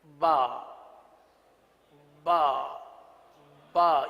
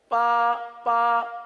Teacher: اگر تر حصے سے کے بجائے خشک حصے سے ادا کریں گے تو با کے بجائے پا بن جائے گا. وہ حصہ جو باہر کی طرف ہے، یہ ہونٹ کا جو حصہ ہے یہ باہر کی طرف ہے.